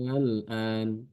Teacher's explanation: Yaitu dibaca dengan ibdal, jadi mengganti huruf hamzah yang kedua dengan alif. Dibaca panjang.